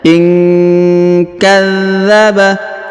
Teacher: nun sukun bertemu ka didengungkan dan disamarkan ya.